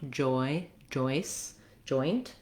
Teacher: It looks like a D and a J sound together. So my tongue starts in the position for the D, but then it drops down and the air can push out.